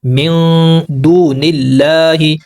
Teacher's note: ہم سوفٹ غنہ یعنی اخفا کرتے ہیں، نون کی آواز کو چھپاتے ہیں